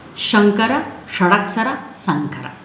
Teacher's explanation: ಶಂಕರ ಅದು ತಾಲವ್ಯ, palatal sound. ಶ ಮೂರ್ಧನ್ಯ, ರೆಟ್ರೋಫ್ಲೆಕ್ಸ್ sound. ಸ ಡೆಂಟಲ್, ದಂತ್ಯ.